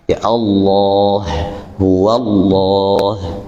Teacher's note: sebelum lafaz jalalah itu fathah atau apa? Dhammah, maka dia dibaca tebal. Jika sebelum lafaz Allah itu kasrah, maka dia dibaca tipis.